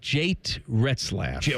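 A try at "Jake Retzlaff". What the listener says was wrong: Or Jake, right? Jate? Jake with a K.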